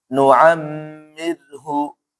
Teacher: pertama gunnah, kemudian apa? Tarqiq atau tipis ya. Kenapa ra sukun sebelumnya kasrah.